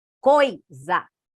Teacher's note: Começa com uma vogal e vai para uma semivogal